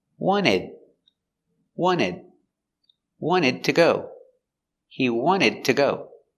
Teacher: pronunciation of ed pronounced ed when it's followed by a consonant when there's a consonant after the word we pronounce the d with a stop d you put your tongue up and you stop the air